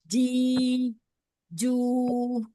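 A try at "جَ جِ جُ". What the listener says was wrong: itu jangan agak ke depan deh. Ke belakang lagi. Iya, belum makhrajnya belum pas.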